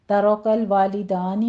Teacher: ترکل والدانی میں را مفخم پڑھی جائے گی، آگے والدانی دونوں جگہ 2 کاؤنٹ کرنا ہے، ایک الف مدہ ہے اور دوسرا فتح قائمہ، قائم مقام الف مدہ ہی ہے۔